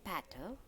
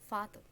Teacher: The voiceless stop consonant p has become voiceless fricative f.